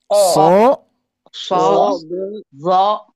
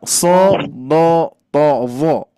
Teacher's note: Ketika berharokat fathah, kasroh ataupun dhammah, kondisinya tetap tebal.